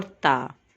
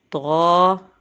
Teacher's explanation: جو تا کا ساؤنڈ ہے اس کو ہم باریک نکالتے ہیں، جبکہ طا کے ساؤنڈ کو ہم وزنی یعنی موٹا کر کے ادا کرتے ہیں